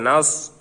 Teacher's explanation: নাস সদের উচ্চারণটা ঠোট গোল হবে।